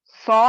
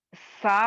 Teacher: सौद की आवाज को मोटा पढ़ा जाएगा और सीन की आवाज को बारीक पढ़ा जाएगा